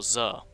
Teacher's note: out of basic semantic concepts and these words are separated by a short sound akin to an outburst of voiced post alveolar fricative